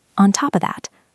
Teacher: Often the of becomes just a schwa sound.